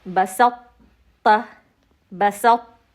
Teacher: تا کی صفت استعلا باقی رہی ہے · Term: ادغام متجانسین ناقص